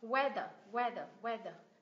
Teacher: Mình stress vào âm thứ nhất và âm thứ hai là schwa sao.